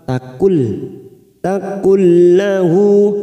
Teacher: nun sukun bertemu lam idgham bila guna, hanya masuk tanpa mendengung, masuk pada huruf lam